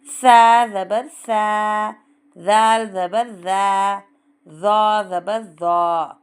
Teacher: एक चावल के दाने जितनी ज़बान ऊपर के दांतों के थोड़ा बाहर निकाल के पढ़ना है।